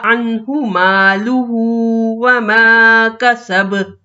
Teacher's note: عنہ یہاں ساکن نون ہے لیکن اس کے بعد حروف حلقی ہے، اس لیے غنہ نہیں ہوگا۔ عنہ مالہ وما کسب، پھر یہاں ہم نے وقف کیا اور با ساکن ہو گیا، ساکن با پہ قلقلہ۔